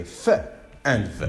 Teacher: They are the sounds that are produced by actually blocking the air by combining both the upper teeth with the lower lip. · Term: labiodentals